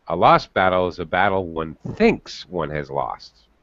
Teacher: notice when I read it, I change the intonation slightly, and I can't help myself. I highlight thinks.